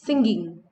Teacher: the g is used instead of ng in the middle of the word.